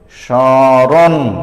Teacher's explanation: দেখো, এই রণ যখন আমি বলেছি তখন আমার নাক দিয়ে একটু সামান্য কম্পিত হয়েছে, এই সামান্য কম্পিতই হলো সানুনাসিক · শব্দের প্রথমে মফলা থাকলে তার উচ্চারণ হবে না এবং সেটি যুক্ত স্বরধ্বনিটির সানুনাসিক হবে, মানে নাক দিয়ে সামান্য উচ্চারণ হবে